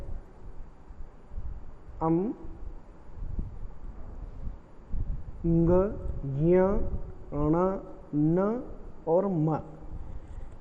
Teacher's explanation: इनका आप उच्चारण करके यदि देखेंगे तो वो जो उच्चारण करते समय जो ध्वनि निकलती है वो नाक और मुंह दोनों से निकलती है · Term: नासिक के ध्वनियाँ